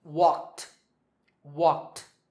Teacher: the last sound is k, which is unvoiced, so the ed ending is pronounced t.